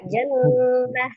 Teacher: ada huruf tak marbutah ketika dia diwakafkan menjadi bunyi huruf ha, jannah. Tapi ketika dia diwasol atau disambungkan, tak marbutah itu akan menjadi huruf ta ya, menjadi huruf ta.